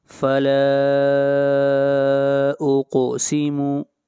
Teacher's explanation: لام کے اوپر جو مد ہے اس مد کو مد منفصل کہتے ہیں، اور مد منفصل وہ مد ہوتی ہے جہاں پر حروف مدہ کے بعد حمزہ دوسرے کلمے میں ہو۔ یہاں پر الف مدہ ہے اور حمزہ دوسرے کلمے میں ہے، اس لیے یہ مد منفصل ہے اور اس کی مقدار 3 الف ہے۔